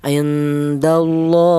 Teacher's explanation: lafal Allah ini didahului huruf yang berharakat fathah ini dibaca tafhim atau dibaca tebal